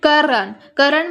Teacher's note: हम लोग करण में क्या कर रहे हैं क के ऊपर बल दे रहे हैं ना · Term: बलाघात